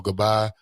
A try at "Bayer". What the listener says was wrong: Bayer, Bayer. The G is silent. It's not Gabayer. it's Bayer. It's like Bayer aspirin.